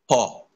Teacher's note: শুধু ঠোঁট দুটো পরস্পর ঠেকে উচ্চারিত হবে